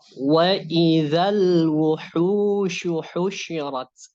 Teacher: huruf lamnya jadi dibaca sukun, tidak dimasukkan ke huruf wau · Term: alif lam qamariyah